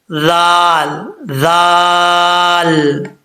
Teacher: जुबान का सिरा ऊपर वाले दांतों के किनारे से लगे तो जाल पढ़ा जाता है · یہ زبان کا سرا اوپر والے دانتوں کے کنارے سے لگے تو دال پڑھا جاتا ہے